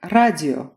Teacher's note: where the last o still sounds like o, even though it's unstressed